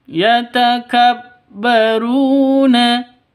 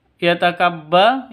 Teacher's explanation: ru panjang dua ketukan karena di sini ada waw mati diawali dengan dhammah